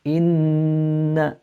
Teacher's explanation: So the noon has a shadda, again elongate the sound.